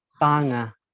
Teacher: The stress should be in the first syllable. It's like tanga, not Tanga.